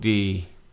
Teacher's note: D is flat tone, your normal voice